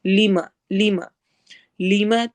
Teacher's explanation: یہ ہرگز لمبا نہیں ہونا چاہیے، لیما کر کے نہیں پڑھنا